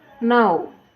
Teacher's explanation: gerakan lidah dilakukan dari posisi vokal terbuka ke vokal yang lebih dekat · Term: closing